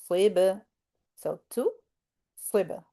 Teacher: We're bouncing on the ba because ba is one of those five qalaqala letters